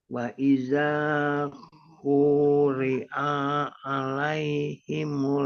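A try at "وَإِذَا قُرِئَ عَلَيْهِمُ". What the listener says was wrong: Pendek. Quri'anya pendek ya. Wa idza quri'a alai.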